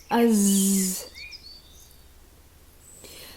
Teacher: when the letter Za is sakin like Az, this letter has a continuous sound then. We will be relying on our sound here.